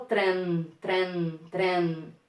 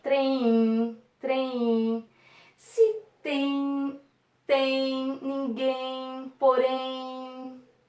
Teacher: Este M final, ele tem som de I, é assim que a gente pronuncia